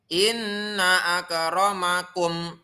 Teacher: mim sukun ketemu ain disebut dengan izhar syafawi cara membacanya yaitu dibaca dengan jelas memenya